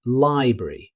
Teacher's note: many native speakers shorten it to library, dropping the middle R sound. It's a natural reduction that you'll hear all the time.